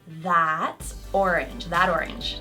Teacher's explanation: T into a D sound when it comes between 2 vowels